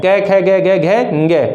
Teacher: इन सभी वर्णों का उच्चारण कहाँ से होता है, कंठ से होता है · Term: कंठीय वर्ण